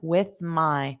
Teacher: So notice that th on with my with my. So make sure you form that full th before you go to the m.